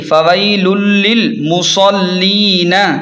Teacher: یہاں تنوین یعنی دو پیش کے بعد لام آ رہا ہے، اس لیے غنہ نہیں ہوگا بلکہ ادغام بغیر غنہ ہوگا ، یعنی ہم ملا کر پڑھیں گے فویل للمصلین، اس طرح